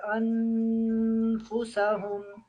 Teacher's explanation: یہ ان پہ غنہ کرنا ہے، نون ساکن ہے اور اس کے بعد حروف حلقی میں سے کوئی بھی حروف نہیں آ رہا ہے۔